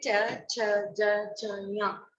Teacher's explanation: हमारी जीभ है वो ऊपर तालू से टकराती है, इसलिए इसको च वर्ग को तालव्य ध्वनि कहा जाता है।